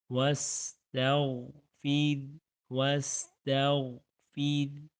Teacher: را ساکن ما قبل کسرہ، را ساکن پیچھے والے حرف پر کسرہ یعنی کہ زیر ہے تو بریک کریں گے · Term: را کو بریک